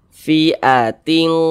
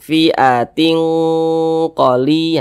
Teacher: lebih tinggi kadar dengungnya atau kadar gunahnya, sehingga lebih condong berbunyi eng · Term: ikhfa hakiki ab'ad